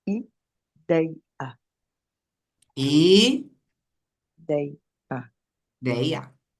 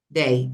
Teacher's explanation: a sílaba tônica está no DEI